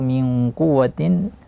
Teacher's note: qaf diikhfakan dan secara tebal tafkhim karena dia huruf isti'la